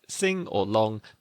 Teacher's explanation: Back of the tongue touches the soft palate, nasal airflow. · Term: voiced nasals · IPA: /ŋ/